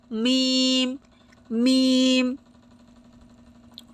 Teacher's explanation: উভয় ঠোঁটের শুকনো অংশ অর্থাৎ বাহিরের অংশটা লেগে উচ্চারণ হবে মিম মিম।